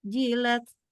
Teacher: Sedikit tapi huruf jim. Jim kan adalah salah satu huruf yang disebut syiddah. Jadi harus berhenti banget.